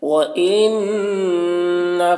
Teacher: نون مشدد غنہ ہوگا